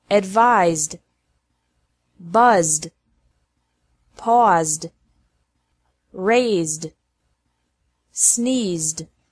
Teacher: ED is pronounced like D after verbs ending with a Z sound.